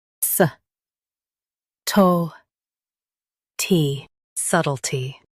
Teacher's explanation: Emphasize suht and soften tee.